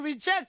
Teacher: In reject, it is the jet that actually receives the primary stress.